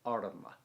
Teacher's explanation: you should pronounce that first A as a kind of noise, like cup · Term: short A